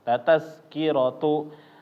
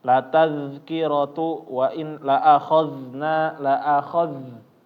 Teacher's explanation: Tapi za-nya dia tetap bergetar, lidah jangan sampai terputus